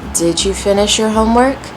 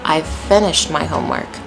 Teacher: because it's a question, we're going to use the rising intonation versus the statement, I've finished my homework. Falling intonation.